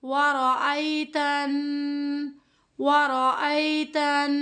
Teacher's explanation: تا کو نون کے ساتھ ملاتے ہوئے ہم نے یہاں پر غنہ کرنا ہے۔